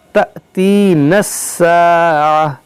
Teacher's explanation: ये अलिफ से बना हमज़ा और हमज़ा साकिना है, तो इसमें झटका होगा